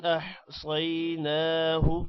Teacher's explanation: احصیناہ صاد موٹا ہوگا، صاد کے بعد یہ ہے تھوڑا سا لمبا کریں گے، نا کو بھی لمبا کریں گے کھڑی زبر کی وجہ سے، ہو کو لمبا نہیں کرنا.